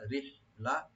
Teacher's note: এটা হাটাকে একটু হামস করব, আর রা একটু পাতলা করে পড়বো আমরা